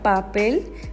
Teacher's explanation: Te darás cuenta cómo se separan los labios para liberar el aire además si tocas tu garganta no sentirás la vibración de las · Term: bilabial